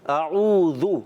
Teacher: اعوذ، حمزہ اور عین کلیئر ہونے چاہیے، اور اس کے بعد ذال کی ادائیگی ہماری کلیئر ہو، زا نہ ہو جائے۔